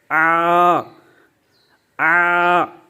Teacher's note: تو اب ہم اس کو جب پڑھیں گے تو اس کو دراز کریں گے، آ آ اتنا دراز کریں، عین کی آواز بھی نکال لیں اور ساتھ ساتھ اس کو دراز کریں